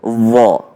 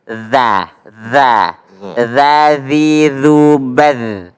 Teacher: Jadi kalau dha di dalam, kalau za di luar.